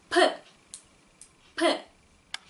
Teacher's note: 종이가 날아갈 정도로 이렇게 강하게 숨을 내쉬면서 발음을 하는 알파벳이다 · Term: 빼